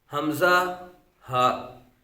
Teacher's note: حمزہ، ہا، یہ حلق کے نیچے والے حصے سے ادا ہوتے ہیں۔ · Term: حروف حلقیہ